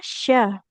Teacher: Tengah lidahnya menempel ke langit-langit atas ya. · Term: huruf syin